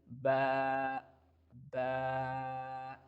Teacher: How we can pronounce the letter ba? Both of our lips making the connection with each other and give a thin sound like ba ba.